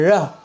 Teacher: रा में जीभ 3 बार कांपती है